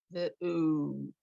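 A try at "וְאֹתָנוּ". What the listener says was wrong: Not ooh. Look where that dot is. What's this underneath?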